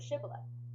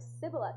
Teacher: They would pronounce sh with an s sound